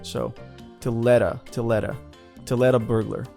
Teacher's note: there's an American T in the word let that connects with the article A